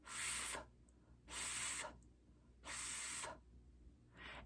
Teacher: We form this sound by placing our top front two teeth against our lower lip and then blowing out without using our voice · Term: F sound